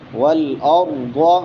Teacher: را موٹی ہوگی کیونکہ اس سے پہلے زبر ہے، ضاد بھی موٹا ہوگا کیونکہ موٹے حروف میں سے ہے